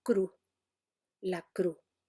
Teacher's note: el hablante que pierde la S final no dice cruz, sino cru